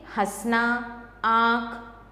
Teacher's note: अनुस्वार अनुनासिक, अनुस्वार इसे व्यंजन के ऊपर बिंदु के रूप में लगाया जाता है, जो ये अंग होता है ना इसे, जैसे कंस, पतंग आदि। अनुनासिक इसे मुख और नाक से बोला जाता है, जैसे हंसना, आँख आदि।